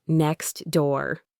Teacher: When a T or D sound is stuck between two other consonant sounds, it often gets deleted. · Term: elision